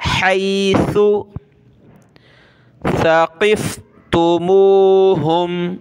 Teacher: ثا پہ زبان نکالیں گے، قاف کو موٹا کریں گے اور قاف کو فا کے ساتھ ملانا ہے